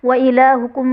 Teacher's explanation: میم ساکن کے بعد حرف با اور میم کے علاوہ حمزہ آ رہا ہے، تو یہاں پر اظہار شفوی کا قاعدہ ہوگا، یعنی میم ساکن میں غنہ نہیں کریں گے